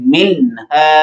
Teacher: ابھی ہم نے یہاں پر بھی نون ساکن کے بعد ہا پڑھی، ہا حروف اظہار میں سے. منہا یعنی نون کو فل ظاہر کر کے بغیر غنہ کیے آگے پڑھیں گے منہا، اور یہاں نون ساکن آ رہا ہے، اس کے بعد سا ہے، سا کس میں سے ہے؟